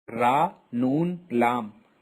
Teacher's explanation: upper murals ra noon lamb comes out from the edge of the tongue and the part of the roots of the teeth towards the pallet